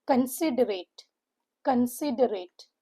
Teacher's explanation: The stress is given on the second syllable which is sit.